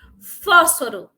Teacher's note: fósforo depois da tônica tem duas sílabas átonas Então ela é proparoxítona